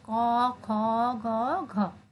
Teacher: জিহ্বামূলীয় মানে জিহ্বার যে পেছনের অংশ থেকে যে ভিতর থেকে যে উচ্চারণটা আসে সেটা হচ্ছে ক খ গ ঘ।